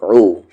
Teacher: حمزہ کا مخرج bottom throat اور یہ عین کا مخرج مڈل تھروٹ